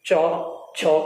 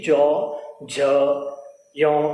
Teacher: च छ को बोलेंगे तो गूंज पैदा नहीं होती, लेकिन जैसे ही ज झ य इन वर्णों का उच्चारण करेंगे तो यहाँ पर गूंज पैदा होती है।